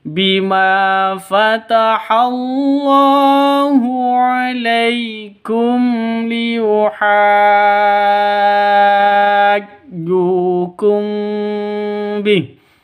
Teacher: mim mati bertemu dengan lam, jelas terang karena izhar safawi, ini hukum mim sukun ya, atau mim mati.